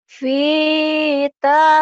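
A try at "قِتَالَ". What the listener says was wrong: Ini kan bukan V, ini kan titiknya dua.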